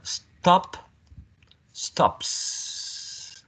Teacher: Considering p is a voiceless consonant sound, so we have s as a voiceless consonant sound